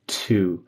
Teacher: So your T and two became like a TCH, which is really common for Brazilian. So you kind of said chu instead of I would like to, or to, I would like to improve.